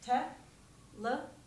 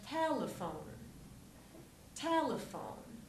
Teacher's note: the stress is in the first syllable on te